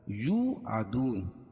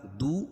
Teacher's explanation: دو، یہاں بھی واو مدہ. دونوں جگہ ایک ایک الف کے برابر کھینچ کے پڑھیں گے. اور وقف کی صورت میں نون کے اوپر جو زبر ہے اس کو جزم سے بدل دیں گے تو یہاں مد عارض وقفی ہوگا.